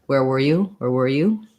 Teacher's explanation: in fast speech sometimes wear might get a little bit reduced the air is not as prominent it sounds a little bit like er